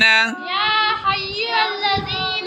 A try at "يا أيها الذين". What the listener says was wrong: حیو نہیں، یا یہ یا ہے. ٹھیک ہے، ایو حل ہا کو اس لام سے ملائیں گے، الذین. آپ پورا لفظ پڑھیں گے یا ایوہا الذین.